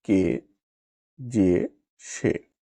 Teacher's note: একাক্ষর সর্বনাম পদের এ সংবৃত হয়